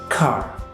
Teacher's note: in non rotic accents the r often merges with the previous vowel making it longer but does not sound like an R anymore · the R is pronounced clearly, even at the end of the words